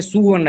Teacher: वैदिक में स्वर्ण जैसे शब्दों को सुवर्ण जैसा बोला जाता था, इसे ही स्वर भक्ति कहते थे। स्वर्ण शब्द है, सुवर्ण कह दिए, लेकिन संस्कृत भाषा में स्वर्ण को स्वर्ण ही कहते हैं।